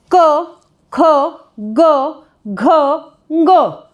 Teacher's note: ये पांचों के पांचों वर्ण हमारे कंठे हैं और क वर्ग जो हमारा उच्चारित होता है ये कंठ से उच्चारित होता है